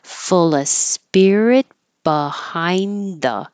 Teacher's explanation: when there's an of before a consonant, in this case spirit, you don't have to say the V in of. You can just say full.